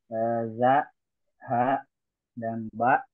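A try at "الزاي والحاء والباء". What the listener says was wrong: pakai alif lam kisah Suwandi. Al-za, al-ha, al-ba.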